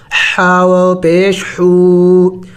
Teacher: حا بھی حروف حلق میں سے ہے اور حلق کے درمیانی حصے سے یعنی وسط حلق سے ادا ہوگا